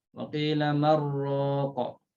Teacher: Idghamkan nun dalam ra, waqila marraqa.